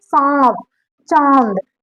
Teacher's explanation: हमारा जो आवाज आ रही है वो नाक और मुंह के रास्ते आ रही है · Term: अनुनासिक स्वर